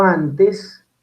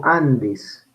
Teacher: O yo, por ejemplo, digo Andes, dentalizo la N, ¿cierto? N antes de T o D, pues va a sufrir el fenómeno de la dentalización